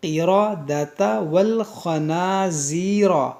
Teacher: یہاں پر دیکھیں را کو موٹا کریں گے. یہاں پر دیکھیں قاف اور را دونوں موٹا ہوگا